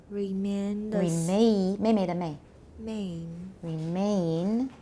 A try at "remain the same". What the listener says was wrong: Remain. You're going too fast, and the N is coming too soon. The N is very, very short. Make the A part really long. Remain. Not me at the beginning.